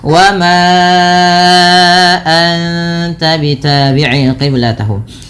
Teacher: Panjangkan suara ma sepanjang 4 atau 5 harakat karena ia termasuk bacaan mad jaiz munfasil, yang dimana kalau mad jaiz munfasil harus dipanjangkan sepanjang 4 harokat atau 5 harokat, tidak boleh 2 kalau dalam jalur imamnya Imam Syatibi.